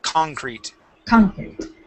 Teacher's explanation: we want to pronounce this with the accent at the beginning instead of concrete.